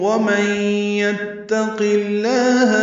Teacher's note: وَمَن يَتَّقِ اللَّهَ میں نون ساکن کے بعد یا آنے کی وجہ سے ادغام ہے، غنہ کریں گے